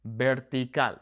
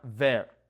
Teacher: B and V make the same sound. That soft B sound